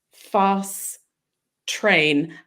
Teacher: almost drop the T on the end of fast. So consonant to consonant, if they're the same consonant.